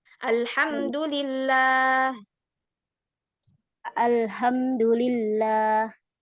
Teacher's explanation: lafaz Allah, kita lihat di Quran itu tidak dengan alif, tidak dengan apa panjang gitu ya. Tapi dibacanya tetap panjang.